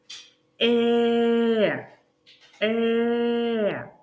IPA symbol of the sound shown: е